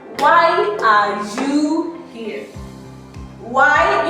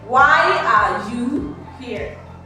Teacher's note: my voice came down at the end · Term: falling